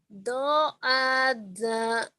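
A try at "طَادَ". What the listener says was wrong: To. Zo dibaca zo, zo dibaca to, ketuker-tuker geningan. To ada, to ada.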